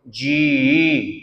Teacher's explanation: ਜਜੇ ਦੀ ਬਿਹਾਰੀ ਨੂੰ ਆਪਾਂ ਥੋੜਾ ਲੰਬਾ ਕਰ ਦੇਣਾ ਅਾ ਆਪਣੇ ਆਪ ਵਿੱਚ ਆ ਜਾਏਗਾ